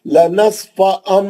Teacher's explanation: लनस्फ़ अम, अब मैं मीम का गुन्ना कर रहा हूँ, इखलाब का, लनस्फ़ अम, जो होठों को सख्ती से पकड़ के गुन्ना कर रहा हूँ, क्लियर मालूम हो रहा मीम का गुन्ना।